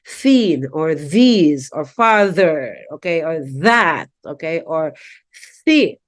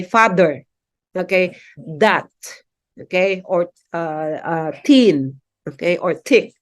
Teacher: the use of T okay and D for voiceless and voice th